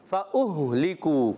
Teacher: اوپر والے دانت کنارے نیچے والے ہونٹ کے تر حصے سے لگتے ہیں تو فا ادا ہوتا ہے